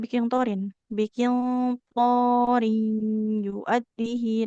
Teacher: Nggak ada bunyi nun sukunnya. Karena bi melebur ke huruf ya-nya. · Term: idgom bi gunnah